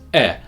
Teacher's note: In this word, the vowel sound is E, a front mid vowel.